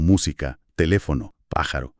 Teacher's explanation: La fuerza recae en la antepenúltima sílaba, o sea, bastante atrás en la palabra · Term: esdújulas, esdrújulas